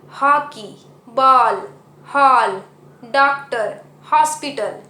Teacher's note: इसे हम आधा चांद कहते हैं हिंदी व्याकरण में, और इसकी आवाज़ आ और ओ की मिली जुली सी आती है, और इसका उपयोग अंग्रेज़ी भाषा में ज़्यादा किया जाता है।